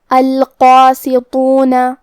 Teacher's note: یہاں حرف الطا ہے اور طا حروف التفخیم میں سے ہے تو ہم یہ حرف کو بھاری آواز میں منہ پھلا کے پڑھیں گے · اور اس پہ کھڑا زبر بھی ہے تو یہاں مد الف ہے، اور کیونکہ مد الف اپنے پیچھے والے حرف کا حکم لیتا ہے تفخیم میں اور ترقیق میں، تو ہم قاف کو اور مد الف کو بھی دونوں کو بھاری آواز میں پڑھیں گے